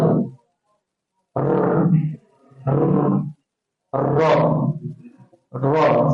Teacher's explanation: satu-satunya Huruf yang bergetar Tak silap saya bergetar ataupun takrir yang mana kita kena ada getaran